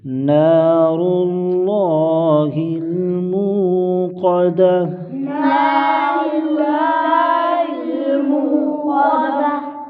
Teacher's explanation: نہ، نون پر الف مدہ، ایک الف کھینچ کر پڑھیں گے، را کو موٹا کریں گے، لام کو بھی موٹا کریں گے